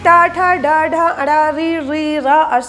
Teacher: आगे देखेंगे ट ठ ड ढ अण ऋ ऋ र अष का उच्चारण स्थान है मूर्धा इसलिए इसे मूर्धन्य वर्ण कहा जाता है